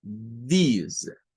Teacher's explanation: Luego la S suena vibrante. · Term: sonido vibrante